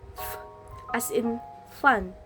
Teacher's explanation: your top teeth touch your bottom lip, and air flows out continuously